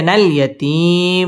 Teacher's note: মদ আরজি তিন আলিফ টান দিয়ে ওয়াকফ করতে হবে